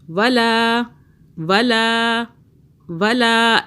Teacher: لام الف زبر لا کھینچا ایک الف کے برابر